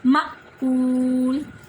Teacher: مأکول حمزہ ساکن ہے، اس کو ہم اچھے طریقے سے ادا کریں گے. حمزہ ساکنہ جب بھی ہوتا ہے تو اس کو جھٹکا دیتے ہیں